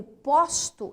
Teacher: é fechado mas quando eu digo posto eu posto fotos tá eu estou falando do verbo esse o ele é aberto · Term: o aberto